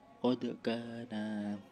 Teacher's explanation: itu terdapat hukum qalqalah sugro sebab dal sukun asli